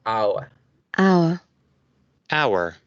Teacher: Miren, un triptongo, la A, la U y la schwa. A, U, schwa, hour.